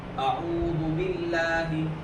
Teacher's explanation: اور لفظ اللہ سے پہلے زیر، لام باریک ہوا.